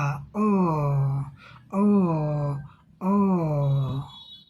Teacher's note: इसके उच्चारण में हमारा आपका मुख होठ गोला हो जाएगा।